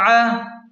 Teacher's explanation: عین حروف حلقی میں سے ہے تو اسے حلق کے درمیان سے صاف نکالیں